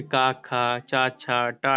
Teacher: जिन व्यंजनों के उच्चारण में स्वर तंत्रियों में कंपन ना हो, अघोष व्यंजन कहलाते हैं।